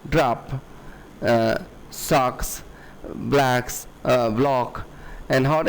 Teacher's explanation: the low unrounded vowel of the short o words · they do not round this o sound but it is fronted to the position where other american dialects have words like that